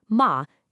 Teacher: It's a sharp, decisive drop from the very top to the very bottom. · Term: fourth tone